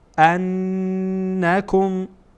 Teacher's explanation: اینجا نون هم غنه میشه، صدا از بینی خارج میشه